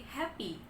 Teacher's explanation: Seperti di happy. Nah, dia adalah voiceless glottal fricative. Bedanya sama yang tadi, itu stop, sedangkan yang itu frikatif karena lebih flowing.